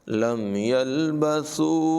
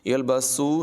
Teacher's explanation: سا میں سٹی کی آواز پیدا نہیں کریں گے، اس کو سین کی طرح نہیں پڑھیں گے. یلبسو نہیں پڑھیں گے بلکہ بغیر سٹی کے پڑھیں گے.